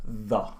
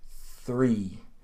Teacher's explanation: So my lips really aren't doing much. But with the word three, I'm already making the R sound, or my lips are making that formation to make the R sound